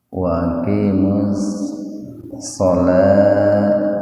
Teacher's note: Wawunya diabaikan saja, jadi langsung diidghamkan ke huruf setelah lam. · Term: idgham samsiyah